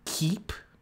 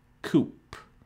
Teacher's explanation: the K in keep has a higher energy than the K in coop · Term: co-articulation